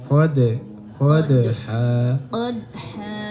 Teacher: Ingat makhrajnya perbatasan antara pangkal gigi dan gusih.